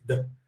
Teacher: Nas línguas ibéricas, no francês, por exemplo, vita, em latim, virou vida, ou seja, a forma t desvozeada virou a forma vozeada d. A forma d, que ainda que seja vozeada, ela é oclusiva, ou seja, eu fecho a boca e solto o som de uma vez, d. Ela virou em espanhol vida, que aí eu não fecho totalmente a boca, eu só vibro a língua, vida.